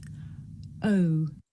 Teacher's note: Boy. This is a diphthong, a double vowel sound. The shape the mouth makes changes from the beginning of the sound to the end.